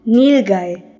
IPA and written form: ˈnɪlˌgaɪ (nilgai)